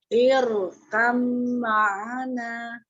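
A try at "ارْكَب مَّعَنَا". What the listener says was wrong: Gunahnya ditahan lagi, gunahnya lebih lama. Irkam ma'ana. Iya, mim tasdid.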